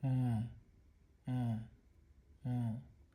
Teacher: meaning engaging both the upper and the lower lip in the production of the sound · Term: labials